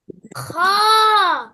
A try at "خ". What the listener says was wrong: মাশাআল্লাহ, মুখ গোল হবে না। খ। দেখো আমার মুখ কিন্তু গোল হয় না।